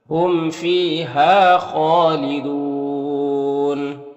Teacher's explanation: خا حروف مستعلیہ میں سے پر پڑھیں گے، کھڑا زبر ہے ایک الف کے برابر کھینچیں گے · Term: مد عارض وقفی